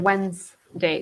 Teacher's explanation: you said Wednesday the D and the D is silent here the D and the e here is silent